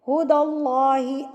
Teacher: heavy پڑھنے کا طریقہ کیا ہوتا ہے کہ آپ کا ہونٹ تھوڑی سی گلائی کی طرف آئیں گے، گول نہیں کرنا بالکل منہ کو